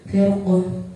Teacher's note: Di situ ada sukun bertemu dengan salah satu huruf isti'la yaitu qaf, maka cara bacanya tebal.